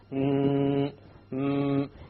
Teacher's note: you will find that the sound comes from the nose